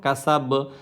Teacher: এখানে কা সা বা হওয়ার কথা, কিন্তু শেষ হরফ যেখানে আমরা থামবো, শেষ বর্ণটাকে আমরা শুধু হরফটা উচ্চারণ করব, জবরজের পেশটা উচ্চারণ করব না